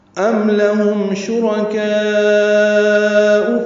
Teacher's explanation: ام میم ساکن پہ اظہار، لہم لام کو جلدی ادا کرنا ہے، ہاں قصہ حلق سے ادا کریں گے، میم ساکن پہ پھر اظہار شفوی ہے. شرکاء میں را پر پڑھیں گے، را پر زبر ہونے کی وجہ سے